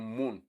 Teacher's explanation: Then the ma, the one you have in moon, that is bilabial nasal.